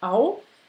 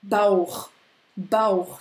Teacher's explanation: Et puis, on rajoute un A, on a la diphtongue A-U qui fait AO